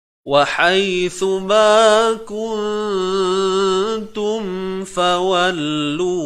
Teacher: Mim ni datang daripada syafah, syafawi, bibir kita. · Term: mim mati